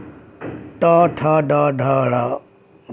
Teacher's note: और ट ठ ड ढ र और स और री को बोलेंगे तो हमारी जो जीभ हल्का सा मूर्धा को स्पर्श करती है, तो इन वर्णों का उच्चारण स्थान मूर्धा है